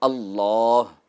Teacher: پہلی غلطی یہ ہے کہ لفظ اللہ کو اللہ کہہ کر پڑھنا، یعنی صحیح جو تلفظ ہے وہ ہے اللہ۔ یہاں اس میں جلالت میں لام مشدد بھی ہے اور اس کے اوپر کھڑا زبر بھی ہوگا، تو اس کو 2 زبر کی مقدار یہ کھینچ کر پڑھا جائے گا